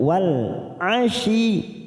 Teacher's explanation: masuk pada huruf ya yang bertasdid tanpa ditekan lama-lama